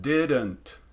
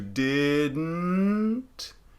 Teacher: a lot of people when they say this word didn't they do it through the mouth didn't as opposed to didn't through the nose